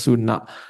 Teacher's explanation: N yang lidahnya menempel ke atas langit-langit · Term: n titik bawah